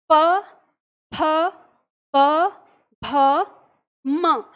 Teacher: जब हम इस वर्ग का उच्चारण करते हैं तो हमारे जो होठ हैं वो आपस में लगते हैं और झटके से हवा के साथ खुलते हैं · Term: प वर्ग